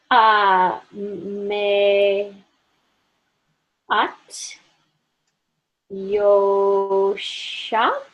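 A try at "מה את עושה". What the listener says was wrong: So it's ma at, and this is osa. You're right that this could be either sh or s. If there were vowels here, then here I didn't put vowels, but if I would have put vowels, then there would have been a little dot on the left part of this shin, and that means that it's s. This letter can be sh if there's a dot here, s if there's a dot here. So there it would be s.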